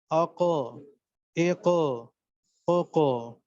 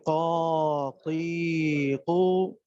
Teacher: تو یہ زبان کی جڑ تھوڑا سا اوپر کو اٹھے گی. تو اس اوپر کے اٹھنے سے کیا ہوگا کہ اوپر جو گوشت کا لوتھڑا ہے، لحاظ، لحاتیہ کہتے ہیں اس کو، لحاظ. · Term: قاف کینچی والا